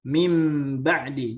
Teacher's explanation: Ya, diitbakan, dirapatkan dua bibirnya, ya. Dirapatkan dua bibirnya, kemudian mengalirkan sifat huruf nun ke hidung kita. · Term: itbaq